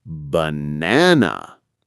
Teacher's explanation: In banana, the strong beat is in the middle. Banana. In museum, the strong beat is also in the middle. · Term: Word stress